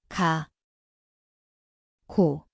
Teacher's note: It sounds like G/K. The place is the back of the tongue.